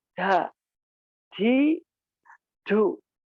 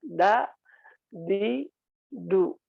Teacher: Kalau ta itu mengeluarkan nafas, kalau da dia tidak. Jadi pengucapan da itu tidak ada aliran nafas. Jadi tidak terasa seperti ta ya.